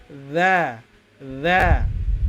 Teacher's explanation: Jadi aliran nafasnya itu tertahan ketika mengucapkan huruf tersebut. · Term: sifat jahar